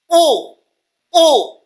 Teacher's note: இந்த ரெண்டு இதழ்களுமே குவிவதால், இப்ப குவியறதுக்காக நான் மேல நோக்கி போட்டிருக்கிறேன். ஊ ஊ இரண்டு இதழ்கள் குவிவதால் உண்டாகும் எழுத்து ஊ.